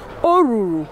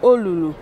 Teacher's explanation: where the standard Igbo will have R, they will always pronounce L.